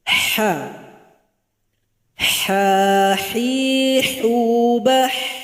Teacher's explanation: Itu tenggorokan pertengahan. Jadi bunyinya seperti orang kepedasan makan cabe. Ha juga ada suara nafas yang mengalir. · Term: huruf ha